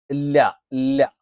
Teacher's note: നാവിന്റെ അറ്റത്തോട് ചേർന്നു കിടക്കുന്ന വശം അല്ലെങ്കിൽ നാവിന്റെ തലയുടെ മുതുക് അല്ലേ അത് നേരെ മുൻപല്ലിന്റെ മോണയോട് ചേർത്തു വെക്കണം മുൻപല്ലിന്റെ മുരട്ടിൽ അല്ല മോണയിലാണ് നമ്മൾ വെക്കുന്നത് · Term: ലാമിന്റെ മഹറജ്